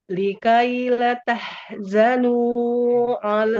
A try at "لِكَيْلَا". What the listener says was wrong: Lamnya panjangkan dulu huruf lamnya. Likaila.